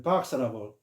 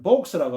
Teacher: 미국식 발음 때문에 박스라고 하고, 영국식으로는 우리가 보통 보면 복스라고 하는데 요게 오처럼 이렇게 발음을 하는 거죠